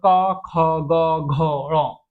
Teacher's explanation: क वर्ग का उच्चारण स्थान कंठ से होता है। कंठ मतलब हल के ऊपर से देखिए साउंड निकालेंगे।